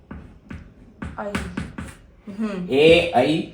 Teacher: ए का कंठ और ई का तालु, ए का कंठ तालु।